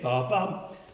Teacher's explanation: an acute where the voice goes up little within the compass of a fifth